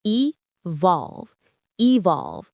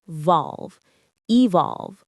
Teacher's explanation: The stress is on that second syllable.